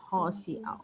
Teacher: Si au tahan, idgham bi gunah.